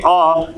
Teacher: अ एक ऐसा स्वर है जिसका उच्चारण करने पर मुख द्वार पूरा खुल जाता है, बिना पूरा मुख खोले आ का उच्चारण नहीं हो सकता, इसीलिए इसको क्या कहा गया, विवृत कहा गया।